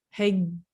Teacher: you don't actually hear that d, and you've also got that soft g, that j on the end